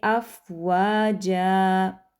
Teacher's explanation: جا کے اوپر 2 زبر ہیں لیکن یہاں پر ہم وقف کر رہے ہیں، تو ہم نے جو 2 زبر کا رول پڑھا تھا وہ ڈیفرنٹ تھا، وہ یہ تھا کہ ہم 2 زبر کو ختم کر کے ایک زبر پڑھتے ہیں الف مدہ کے ساتھ